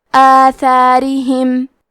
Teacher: ہم یہ دونوں مد کو برابر سے ادا کریں گے اور حرف را کو پتلی آواز میں پڑھیں گے